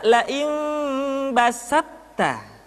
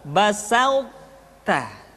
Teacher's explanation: Tidak basatta tapi basauta. Sifat itbaq yang dimiliki oleh huruf to masih tetap ada, sehingga ketika mengucapkan to bertemu dengan ta terdengar suara yang menebal